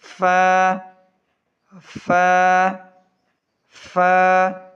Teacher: फ़ा पढ़ते वक्त ऊपर के दांत नीचे के होंठ से लगते हैं। फ़ा पढ़ते वक्त ऊपर के दांत नीचे के होंठ से लगते हैं।